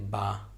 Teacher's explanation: اب یہ دونوں ہونٹوں کے ملنے سے نکلتا ہے تو اس کا مخرج یہ دونوں ہونٹ ہوئے۔